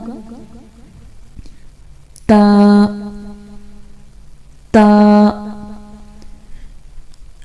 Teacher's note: سامنے اوپر والے جو دو دانت ہیں اس کی جڑ پہ لگے گی زبان اور پھر ادا ہوگا